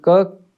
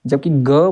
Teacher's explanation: बच्चों क के उच्चारण करने में कोई कंपन नहीं है, ख के उच्चारण करने में भी कोई कंपन नहीं, जबकि ग बोलेंगे बच्चों गले में थोड़ी सी कंपन पैदा होती है। अगर आप साथ में प्रयास करेंगे तो आपको अवश्य पता चलेगा कि कंपन पैदा हो रही है या फिर नहीं हो रही है। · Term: घोष वर्ण